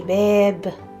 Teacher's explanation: The ending ba has no vowel. Just close your lips quickly, strongly say bab.